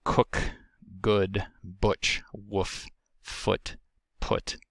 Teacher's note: The next lower back vowel is referred to as upsilon. It is a high back but lax rounded vowel